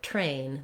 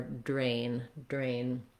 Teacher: We have voiceless T and voiced D. and there's more air coming out for train than for drain